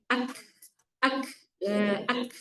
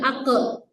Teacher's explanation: kalau kaf nggak mantul, tapi adanya nafas di akhir kan? Ak, ak, bukan ake, salah.